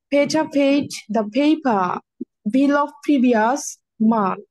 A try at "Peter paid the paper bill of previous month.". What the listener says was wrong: Sweetie, ভালো হচ্ছে P সাউন্ডটা, বাট আর একটু ছন্দের সাথে পড়তে হবে।